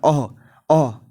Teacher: अह बोलने में भी क्या आ रहा है, सीधे कंठ से क्या हवा आ रही है